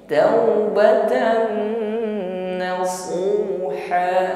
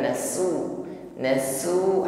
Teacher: Shad lebih tebal daripada sin bukan sekedar nasu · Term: huruf Shad